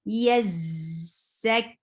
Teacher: Ya is very soft letter. Don't stress over it, but za will get a buzzing sound. Ya is soft.